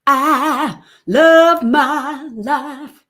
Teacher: in deep south, for this diphthong, IE, it's not a diphthong at all. It's just ah.